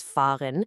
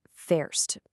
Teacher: The basic verb is fahren, with a nice ah sound, but when she uses it with du, with you, that a suddenly changes to an e.